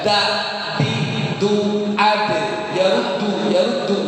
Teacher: ujung lidah ditekan ke gusi bagian atas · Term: huruf dal